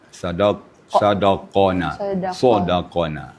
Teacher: Qaf itu kita angkat pangkal lidah bacanya.